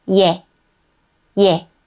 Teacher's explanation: When we add one more short stroke to 에, a y sound is added before 에. So it becomes 예.